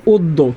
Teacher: দয় জফালা থাকলে উচ্চারণ দ্বিত্ব হয়